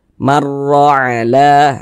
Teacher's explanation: huruf ra dibaca tebal, dibaca tabkhim. Sehingganya pangkal lisan kita itu ketika mengucapkannya naik terangkat ke atas. Huruf ra-nya itu kita tebalkan.